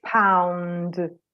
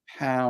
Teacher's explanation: um I think that's because the D sound is voed so the D sound actually begins before you open your mouth